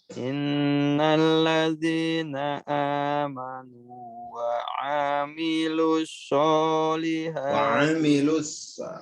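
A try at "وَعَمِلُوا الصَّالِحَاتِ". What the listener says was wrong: wa amilus ainnya pendek ya.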